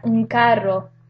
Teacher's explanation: The same thing happens in the example un carro, because the k is also a velar or a velar sound. So that N takes the point of articulation of the k sound.